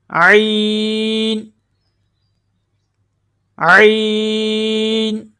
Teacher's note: عین کی آواز جو ہے حلق کے درمیان والے حصہ سے ادا ہوتی ہے